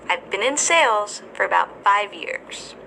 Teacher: in this sentence the word sales and five years are stressed